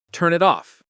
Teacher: The final consonant of one word blends into the vowel of the next. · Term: linking